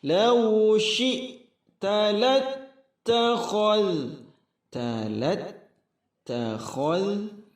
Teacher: tasydidnya dihentakkan, kemudian khal, huruf kha dijaga, zal lembut. Lattakhalta ta'alai, madlin, suara i dijaga.